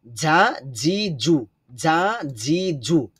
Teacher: জিমের ক্ষেত্রে হবে যা জি জু, যা জি জু, শক্ত আওয়াজ হবে জিহ্বার মধ্যখান থেকে